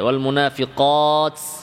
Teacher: কফ মোটা করে ওয়াল মুনাফিকাত এক্ষেত্রে আরেকটা জিনিস খেয়াল করতে হবে, বাতাস হামসের বাতাস বের হবে তায়ের মাখরাজ থেকে, জিহ্বা যেন সিনের মাখরাজে না যায়।